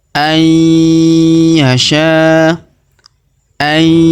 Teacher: huruf nun sukun bertemu huruf ya, maka kita tahan dan kita tekan huruf nun sukunnya melebur masuk ke huruf ya